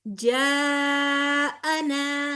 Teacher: الف مدہ کے بعد حمزہ اسی لفظ میں ہے، لہٰذا یہاں پر مد فرعی ہوگی جو کہ 4 کاؤنٹس لمبی ہوتی ہے